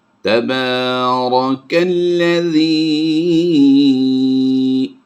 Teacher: را کو پر کریں گے اور کھڑی زبر کی وجہ سے ہم نے با کو لمبا کر کے پڑھنا ہے